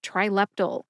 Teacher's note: Put all 3 syllables together and you get Trileptal. Emphasize that middle syllable, lep.